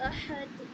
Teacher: ہا کی ساؤنڈ جو ہم نکالتے ہیں وہ حلق سے نکالتے ہیں نا، تو ہا کو اچھے سے بولیں گے احد۔